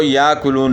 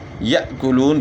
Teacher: حمزہ ساکنہ کو ہم نے پہلے والے حرف کے ساتھ ملا کر پڑھنا ہوتا ہے